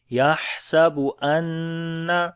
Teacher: نون کے اوپر شد ہے، غنہ کریں گے ، ان لمبا بھی کریں گے، یحسب ان مالہ اخلدہ، میم